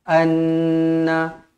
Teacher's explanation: Nun yang bertanda sabdu wajibul dengung dua harakat